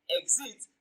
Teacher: the stress on the first syllable